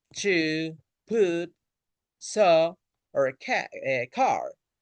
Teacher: These vowels pull the tongue toward the back. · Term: back vowels